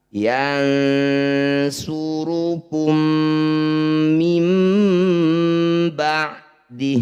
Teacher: Yansurukum, mim, mim sakinah bertemu dengan 'mim', disebut idgham mimi atau idgham mutamathilain. Sisipkan bunyi 'mim' pertama ke dalam bunyi 'mim' kedua , jangan lupa untuk menasalisasikan bunyinya untuk dua harakat. · Bunyi mim pertama, masukkan pada mim kedua, jangan lupa didengungkan 2 harokat.